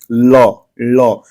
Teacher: है जो ल को बोल दिए ल ल ल में देखिए जो पूरा जीभ का जो अगला सिरा है वह पूरा जो है आपके तालू को पीछे की तरफ टच कर रहा है या छू रहा है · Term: पार्श्विक ध्वनि